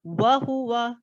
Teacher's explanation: वाव को होठों को गोल करेंगे